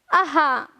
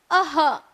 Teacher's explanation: अह यह उच्चार करते समय हमें अंत में ह इस व्यंजन का साउंड आना बहुत ही जरूरी है। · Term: विसर्ग